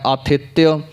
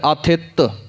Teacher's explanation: ਤੱਤੇ ਨੂੰ ਸਿਹਾਰੀ ਲਾ ਕੇ ਐੜਾ ਮੁਕਤਾ ਵੀ ਪਿੱਛੇ ਬੋਲਿਆ ਜਾਂਦਾ ਹੈ, ਆਥਿਤਯ, ਤੇ ਜਾਂ ਫਿਰ ਆਥਿਤ ਤੱਤੇ ਨੂੰ ਥੋੜ੍ਹਾ ਦਾਬ ਦੇ ਕੇ ਪਾਠ ਕੀਤਾ ਜਾਂਦਾ ਹੈ